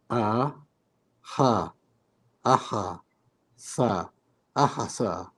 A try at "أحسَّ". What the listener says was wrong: You see, but this letter, in the previous exercises, we were making you read all the letters. Then we said when there's sukun, you can't read the letter on its own. So this is a form of sukun.